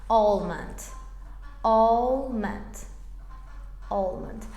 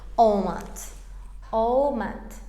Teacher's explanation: Amma British aksentində el hərfi qətiyyən deyilmir.